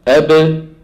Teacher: الباء تخرج بتباعد الشفتين، يعني الآن الشفتين يلتصقان من غير صوت، يلتصقان من غير صوت، ثم تبتعدان عن بعض عن بعضهما، بابتعادهما تخرج الباء الايه المخلقلة. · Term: باء مقلقلة